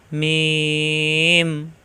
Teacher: মিলানো ঠোঁট ছেড়ে দিয়ে আবার মিলালেই হয়ে যায় মিম